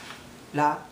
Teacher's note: if it's R sound your tongue is not supposed to touch uh the ceiling of your inside the mouth but in Japanese it does